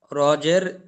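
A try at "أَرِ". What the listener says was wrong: হুম, আবার পড়েন হামজা জাবার আ, তাহলে রজি কি করে হয়? আরি। হামজা জাবার আ, রজের রি, আরি, তাই হ্যাঁ, রজি হবে কেন?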